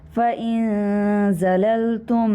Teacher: मीम साकिन के बाद मीम मुतहरिक है, यहाँ पर इदगाम करेंगे, मीम को मीम में मर्ज करके गुना करेंगे।